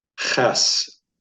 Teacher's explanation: There's the presence of a guttural. It's the Chet